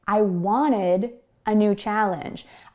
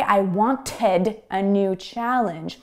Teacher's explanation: In North American English pronunciation, we often delete the T sound or mute the T sound when it comes between an N and a vowel. So because want is spelled W-A-N-T, and then we have the ed ending, it sounds like wanted.